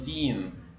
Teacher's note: las dos e se convierten como en una y alargada